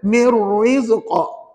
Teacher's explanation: jangan malu-malu nak menyebut kok sebab ini namanya qalqalah kubra